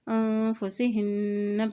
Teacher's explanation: यहाँ देखिए यहाँ भी नून के ऊपर शद है तो यहाँ पर भी गुन्ना अदा करते हुए पढ़ेंगे